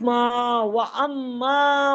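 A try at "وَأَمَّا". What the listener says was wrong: میم زبر الف نہیں، ارے غلط ہجے کرتی ہے نا، وہی پرانا طریقہ آپ کو بتایا بھی ہے، میم الف زبر ما و اما.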